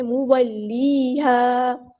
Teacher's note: واو کی زبر کو ہم لمبا نہیں کریں گے، مولیہا، مولیہا نہیں پڑھنا، لیہا.